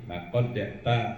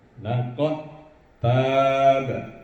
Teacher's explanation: Langsung dimasukkan huruf dal itu kepada huruf ta, diidghamkan.